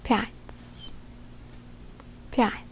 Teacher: because in this case we're using a soft sign, which in Russian language softens the letter standing in front of it, therefore it creates a softer version of a T sound, T in this word.